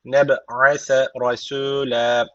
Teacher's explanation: B harfi cezim aldığı için kalkale tecviti var. Birazcık vurguluyoruz.